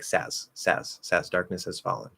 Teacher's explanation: very commonly, we're going to drop the h anyway · Little I want to make sure that z is heard in there. Sometimes it's hard to hear with that devoicing at the very end